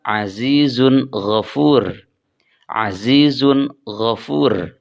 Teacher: maka tanwinnya berbunyi n secara jelas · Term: izhar